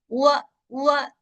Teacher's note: و و و वो पे जबर, आवाज ऊपर जाएगी, पहले क्या होगा, पहले दोनों होंठ गोल हो जाएंगे, और फिर वो की जबर अदा करने के लिए दोनों होंठ खुल जाएंगे